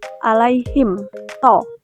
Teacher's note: Pada lafaz pertama alaihim to, hukum tajwidnya izhar syafawi karena mim mati him bertemu huruf to dibaca jelas tanpa dengung